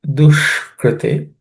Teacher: the ush is cerebral sh, no aspirated consonants in this.